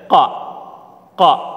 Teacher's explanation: dibaca Qalqalah ya kalau dia sukun dia memantul